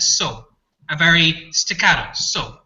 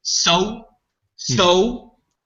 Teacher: one thing that is different between an American accent and an Irish accent is how Americans tend to elongate their vowels